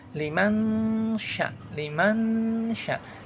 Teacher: Jadi suara nunnya disamar-samarkan. E jadi seperti memasukkan suara ee memasukkan kepada suara syaham. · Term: hukum bacaan ikhfa